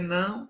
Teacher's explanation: para eu dizer não, o véu palatino ele precisa ficar abaixado.